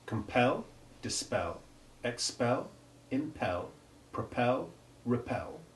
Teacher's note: they always have the stress on the syllable pel in all forms of the verb and its derivatives and the e always has